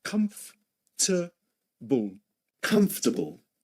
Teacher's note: We don't pronounce the O nor the R. · It's spelled with 4 syllables. It seems it has 4 syllables in spelling, but actually it's pronounced in 3 syllables only.